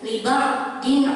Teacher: ada kasroh tain bertemu dengan huruf idhar yaitu ain dan ini dibaca jelas. Liba'din itu idhar.